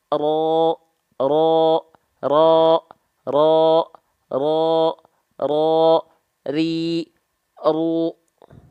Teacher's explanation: ujung lidahnya dia nggak nempel ke langit-langit, bentuknya seperti V, karena yang nempelnya punggung lidahnya. Ru, ru, ru, ru, ro, ro, ro, ro, ri, ru. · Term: huruf ro